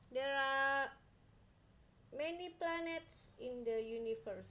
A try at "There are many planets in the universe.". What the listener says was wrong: Ya, bagus.